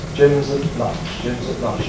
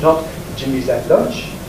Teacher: No special emphasis on at, so it weakens to that. Jim's at lunch. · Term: weak form